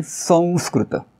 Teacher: अनुस्वाराच्या समोर स आलाय म्हणून इथे अनुनासिक वचा वापर करायचा